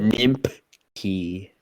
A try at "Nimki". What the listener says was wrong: There's no P. Where's the P?